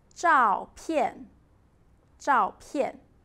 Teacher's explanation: Two falling tones together.